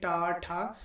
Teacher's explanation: जी दांतों के पीछे वाले भाग पर जाकर मुड़ रही होगी इस तरीके से इस वर्ग का नाम मूर्धन्य व्यंजन पड़ा है